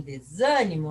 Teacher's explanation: E quando a antepenúltima é a forte, como em desânimo, nós chamamos de proparoxítona.